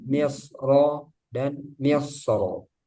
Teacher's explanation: Jadi wasal dan wakafnya dibaca tebal misro dan misro tebal